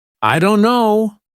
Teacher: The T sound is dropped completely. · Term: dropped sounds